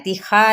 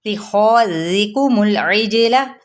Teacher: खौ पुर लेटर है यानी मोटा करके पढ़ना है। ज़िकुमुल इजला, जीम पे कलकला, लाम की हरकत को लंबा नहीं करेंगे।